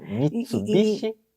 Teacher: em japonês fica um pouquinho diferente porque não se paroxitona a palavra